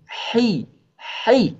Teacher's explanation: Kalau H ini agak berbisik, ya. Kalau H a yang bergema itu H besar. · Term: suara bisik